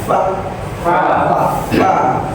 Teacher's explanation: bibir bawah bagian dalam ketemu ujung gigi atas